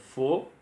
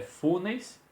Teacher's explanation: A pronúncia ela é fechada do ômega